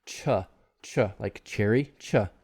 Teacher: So it's touching and then releasing and creating friction.